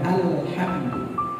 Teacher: Ketika mengucapkan alhamdu, alif lamnya itu jangan tebal, tipis, dibuka. Cara tipisnya itu dibuka alhamdu, ya.